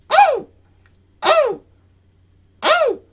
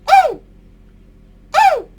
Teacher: You're squeaking with your mouth closed by inhaling air sharply back into your lungs. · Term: sharp squeak